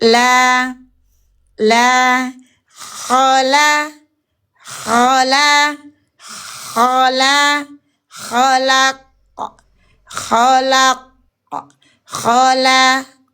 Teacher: Huruf lam kita bunyikan dengan senyum. Dia itu tarqiq, tipis